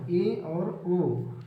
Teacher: इसके बाद है अर्ध सम्रत, जिन स्वरों के उच्चारण में मुख द्वार आधा बंद रहता है